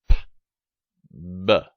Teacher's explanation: We also talked about p and b, what you think of as the P and B sounds. These are bilabial stops, so we close our lips to stop the breath.